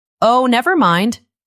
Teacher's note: The stress is on the second word, nevermind.